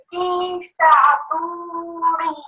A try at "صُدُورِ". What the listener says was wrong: No, not sa. Su, close. Close your mouth. Su.